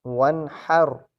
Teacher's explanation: را موٹی پڑھی جائے گی کیونکہ اس سے پچھلے حرف پر زبر ہے۔ یہ بات میں نے اپنے پچھلے سبق میں بھی دہرائی تھی کہ را پر زبر یا پیش ہو یا را سے پچھلے حرف پر زبر یا پیش ہو تو را موٹی پڑھی جاتی ہے۔